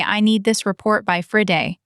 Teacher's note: With Friday strong, the team knows the deadline matters.